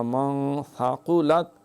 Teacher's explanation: نہ روف حلقی نہ یرملون لا با، لہٰذا اخفا، من ثقلت، ثا سین نہیں پڑھنا، ثاقو قاف پڑھنا ہے، کاکے والا کاف نہیں پڑھنا